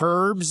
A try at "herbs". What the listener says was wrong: The H is silent in herbs.